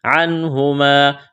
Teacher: حروف حلقی ہے، یہاں پر اظہار کریں گے، غنہ نہیں کریں گے، آواز ناک میں نہیں چھپائیں گے